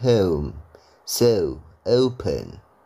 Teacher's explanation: Kalau di British itu O-nya diganti U.